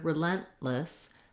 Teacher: And then you notice when I put it together, relentless, that I typically don't say relentless. You can't hear a release of air for this T sound. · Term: stop T